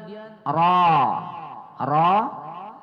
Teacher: ro berbaris di atas kita baca tebal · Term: tafkhim